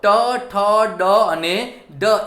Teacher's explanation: જો ટ, ઠ, ડ, જીભનો મૂળ એટલે આગળનો ભાગ, અગ્રભાગ, મધ્ય ભાગ, બરાબર, એની અંદર જે આગળનો જે ભાગ છે એ આખી જીભ વળી અને પાછળના તારવે અડે છે. મૂર્ધન્ય એટલે જીભનો મૂળ ભાગ પાછળના ટાળવે અડી અને જે વર્ણોનું ઉચ્ચારણ થાય છે એને મૂર્ધન્ય વ્યંજન કહેવામાં આવે છે. ટ, ઠ, ડ, ઢ એ મૂર્ધન્ય વ્યંજન થયા.